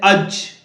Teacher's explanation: زبان کے بیچ اور اس کے مقابلے اوپر کے تالو ادا ہوتا ہے. جیسے اج اوپر جا کے لگ جاتی ہے زبان.